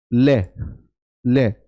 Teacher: यदि आप ले को बोलो तो आपकी जीवा ऊपर वाले दांतों में या दाड़ो में टच होती है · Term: पार्श्विक